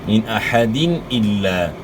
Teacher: یہاں دال کے نیچے 2 زیر کی تنوین ہے، 2 زیر کی تنوین کے بعد حروف حلقی میں سے حمزہ ہے، تو یہاں اظہار ہوگا، غنہ نہیں ہوگا